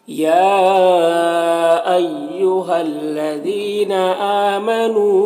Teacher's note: میم میں اظہار شفوی ہو رہا ہے، اسے جلد پڑھنا ہے۔ ہا میں کھڑا زبر ہے، یہاں پر الف مدہ ہے، دونوں کو 1 الف کے برابر کھینچ کر پڑھیں گے